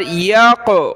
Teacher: اس طرح پڑھنا ہے قاف کو کہ وہ ہمارے منہ کے اندر راؤنڈ کرے گا، گھومے گا، قلقلہ اسی کو کہتے ہیں